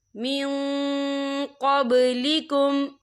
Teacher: نون ساکن کی آواز کو ناک میں چھپائیں گے